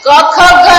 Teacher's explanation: પ્રાણ કઈ જગ્યાએ સ્પર્શે છે ક ખ ઘ એમ કહીએ ત્યારે એ વાયુ ક્યાં સ્પર્શ થાય છે કંઠમાં સ્પર્શ થાય